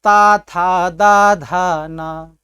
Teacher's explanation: तो हमारा जो उच्चारण हो रहा है उसमें हमारी जिह्वा दांत से सट रही है, तो यही आपका उच्चारण स्थान है। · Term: तवर्ग